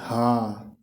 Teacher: काकल्य वर्ण, जिन व्यंजन ध्वनियों के उच्चारण में मुख गुहा खुला रहता है और वायु बंद कंठ को खोलकर बाहर निकलती है